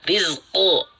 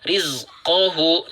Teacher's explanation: Rizqo tanpa mengerucutkan bibir, tanpa memajukan bibir. Rizqohu. Nah, di sini, jika kita tidak membaca, eh, jika kita tidak membaca dengan jeda, maka kita akan membaca " rizqohu" dengan vokal 'u'.